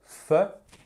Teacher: quand vous faites fe vous n'utilisez pas les cordes vocales